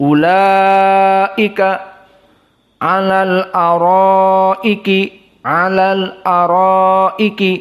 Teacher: mad wajib muttasil hanya dibaca 4, ulaika alal araiki, alal araiki, seperti itu.